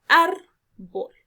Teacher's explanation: lleva la mayor entonación de voz en la sílaba ar, por lo tanto debe llevar tilde obligatoria porque son las reglas de las palabras graves.